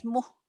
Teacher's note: mad tabi'i yang nggak jadi panjang karena ketemu huruf mati.